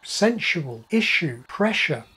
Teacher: S and yod coalesce to form postalveolar SH, as in sensual, issue, pressure.